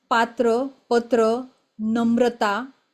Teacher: तर इथे त चा उच्चार आपण आधी करतोय आणि मग र चा उच्चार करतोय